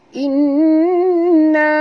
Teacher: Inna nun bersabdu wajib dengung. Ya, nun bersabdu wajib dengung dua harakat wajib al-gunah. Inna na sini panjang 4 hingga 5 harakat mad jaiz kerana pertemuan alif mad dengan hamzah ya.